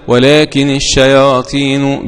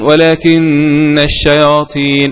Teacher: بكسر النون بعد الكاف مخففة ورفع النون